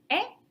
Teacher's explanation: which is a midfront unrounded lax vowel